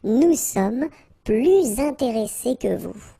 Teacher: And in that case, well, you make this little link, little liaison between the two, so you hear a little bit this S